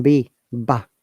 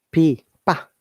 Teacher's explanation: B is voiced, okay, but P is uh, voiceless